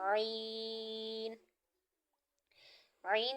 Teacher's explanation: है आईन ईन जो है वह हरूफ हलक में से है हलक के दरमियान वाले हिस्से से अदा होगा और थ्री टाइम्स इसको जो है ना दराज किया जाएगा मदद